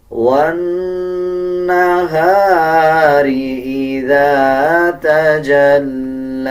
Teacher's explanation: آخر میں دیکھیں لام کے اوپر کھڑا زبر ہے، اس کو 1 سیکنڈ لمبا کریں گے، آخر میں جو یا ہے اس کو سکپ کر دیا جائے گا۔